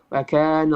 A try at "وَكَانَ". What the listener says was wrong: On your wow, make sure you're pronouncing your wow clearly. So it's wa. So you have to make a circle with your lips. Not waka, wakana, waka. Waka. Circle. Wakana.